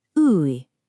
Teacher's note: It's this sound that's kind of right between an ooh and an ih. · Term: high unrounded vowel